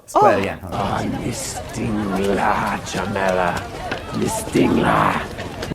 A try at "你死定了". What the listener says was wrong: He overdid it. Normally the emphasis would put 你死. But he said 你死定啦.